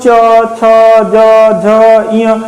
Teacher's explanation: ये जीभ जो है ना ऊपर जाकर ऐसे ऐसे कर रही है, टच कर रही है, स्पर्श कर रही है तालु में, तो उसे क्या कहेंगे, चवर्ग।